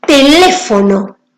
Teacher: Cuando nosotros pronunciamos la palabra teléfono, hay una sílaba que suena con mayor fuerza, con mayor énfasis, que es le. Por eso lleva la tilde. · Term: sílaba tónica